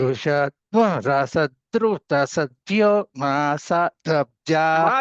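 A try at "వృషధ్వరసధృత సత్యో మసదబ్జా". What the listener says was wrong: దీర్ఘం చెప్పకండి. ఋషత్వ రసధృత సత్యో మసదబ్జా, అన్ని హర్స్వాలే. మసదబ్జా గోజా రుతజా, మా దీర్ఘం అర్థం మారిపోతున్నది.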